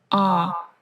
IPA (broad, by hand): ɔ: